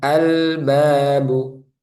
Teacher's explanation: Jadi lamnya dibaca jelas nanti. Jangan sampai dibaca mantul. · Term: Al-Qamariyah